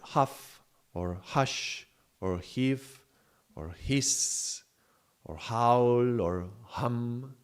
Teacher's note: It's voiceless, meaning that there is no vibration, but it is fricative, which means that there is friction. There is some friction in that sound, and it's caused by the narrow opening of these vocal folds to allow the passage of the air. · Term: the sound of H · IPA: /h/